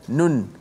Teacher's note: Nun. Memang bukan sekadar hujung lidah kita naik ke langit huruf nun tu, tapi suara keluar nun tu, suara tu keluar daripada hidung. Itulah suara gunnah.